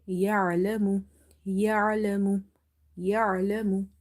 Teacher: you have to say ain here, which is a bit squeezing sound and it's from the middle of the throat.